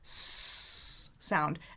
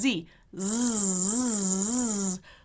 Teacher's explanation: if you activate your vocal folds, then you've got a Z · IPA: /z/